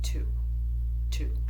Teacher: the tip of your tongue is hitting the back of your top teeth. uh about where those teeth meet up with your gum.